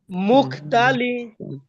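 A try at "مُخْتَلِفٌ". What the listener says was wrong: এই মুখতা টানলেন কেন ভাই তাতো হরকত হরকতের উচ্চারণ তাড়াতাড়ি পরিতে হয়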